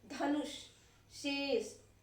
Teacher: तो वहां पर अगर जो हम इस प्रकार के शब्दों का उच्चारण कर रहे हैं और वहां पर हमारा जीभ जो मूर्धा को जाकर छू रही है, तो वहां पर हमारा ये मूर्धानी श यानी कि खटकोड़ वाला श का प्रयोग किया जाएगा उस शब्द को लिखने में, ठीक है ना।